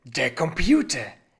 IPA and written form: deːɐ̯ kɔmˈpjuːtɐ (der Computer)